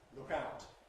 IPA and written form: ˈlʊk ˈaʊt (look out)